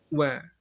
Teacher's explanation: Nah, ketika wa, bibirnya maju dulu.